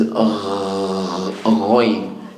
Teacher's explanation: So ghain and kha, they come from the top of the throat. Both of them, they don't have any cut off. There is always continuous airflow when you say them.